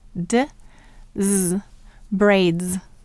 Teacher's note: what sound of s do you hear in braids you hear the voice sound Z